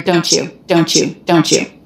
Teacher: it's pretty common for an ending T to mix with the beginning y to make a CH sound and that's what's happening here don't you don't you don't you